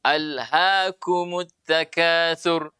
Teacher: sifatnya huruf H ini tipis maka tidak boleh terlalu dalam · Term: huruf tipis